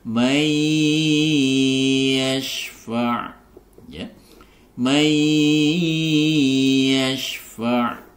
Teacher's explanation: dengan Ya seperti sebelumnya maka di sini dibaca idgham bhunah yaitu idgham masukkan apa yang dimasukkan nun sukun nunnya ini ke dalam huruf ya disertai dengan dengung